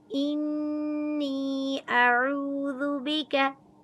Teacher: इन्नी अऊज़ु बिका, हमज़ा की ज़बर को छोटा पढ़ेंगे। आइन को वस्ते हलक से अदा करेंगे। आइन की पेश को वाव मद के साथ मिलाकर पढ़ेंगे।